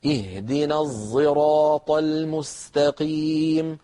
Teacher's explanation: هذا الصوت الذي نطقته امامكم يسميه القراء صاد مشمه زايا